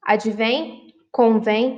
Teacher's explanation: duas vogais em que o som sai pelo nariz e pela boca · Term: ditongo nasal